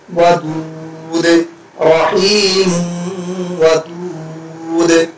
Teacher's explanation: بعد والا حرف وقف کی وجہ سے ساکن ہو رہا ہے ودود کی دال میں قلقلہ اس لیے کہ دال قلقلہ کا حرف وقف کی وجہ سے ساکن ہو رہا ہے